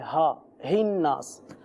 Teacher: ہا جو ہے حلق کا جو آخری حصہ ہے، یہاں سے ہا ادا ہوتا ہے